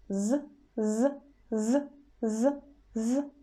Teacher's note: But here we are not touching teeth with our apex. We leave a small gap between teeth and the apex of the tongue, so there will be some air